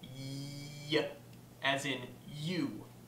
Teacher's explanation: a sound that's made by bringing the center of the tongue up to the hard palate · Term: palatal